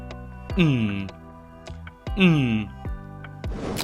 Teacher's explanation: the mouth passage is [music] blocked, but the air escape through the nose. That makes it a nasal sound